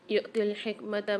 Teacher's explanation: یہاں پر حمزہ کے اوپر دیکھیے سکون اور جزم آ رہا ہے، یہاں جھٹکا دے کے پڑھیں گے